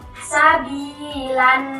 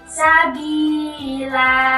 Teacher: Jika dibaca waqaf maka harokat tanwinnya tidak dibunyikan. Yang aslinya sabilan menjadi sabila. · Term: mat iwat